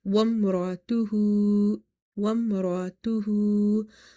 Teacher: the ha is having the inverted dhamma, so we will stretch it up to one alif.